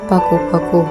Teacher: Bunyi P, ciri-ciri mati oral, labial, klosik.